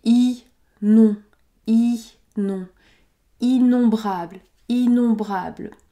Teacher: on prononce la voyelle nasale on puisque nous avons o m plus une consonne